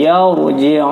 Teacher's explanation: Sebelum ra sukun barisnya fathah, dibaca tafkhim atau tebal. Yar, bukan yar, tapi yarji'un.